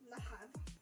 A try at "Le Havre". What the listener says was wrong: No, the H is completely silent. Yeah, Le Havre. Something like that.